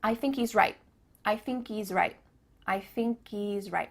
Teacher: at the end of the word right, there's no T sound.